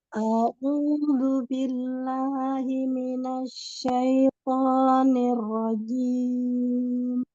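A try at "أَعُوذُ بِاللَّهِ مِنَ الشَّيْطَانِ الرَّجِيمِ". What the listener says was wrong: Suaranya dorong lagi ke depan. Ainnya boleh diambil dari tengah tenggorokan. A'udzu.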